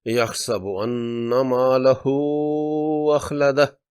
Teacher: سورہ حمزہ کی آیت 3 میں لہو کی الٹی پیش واو مدہ کے قائم مقام ہے اور اخلدہ کی حمزہ دوسرے کلمے میں ہونے سے مد منفصل ہے، اس لیے لہو کی ہا کو 4 حرکات کھینچ کر پڑھیں گے۔ یحسب ان مالہ اخلدہ۔